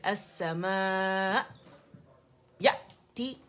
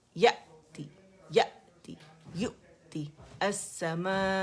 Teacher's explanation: आवाज कटेगी दूसरे हमजा पे, सुकून के साथ झटका होता